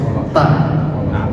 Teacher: Kalau ta itu ada salah satu sifatnya yang bernama hams. Ta agak sedikit keluar nafas ta ya.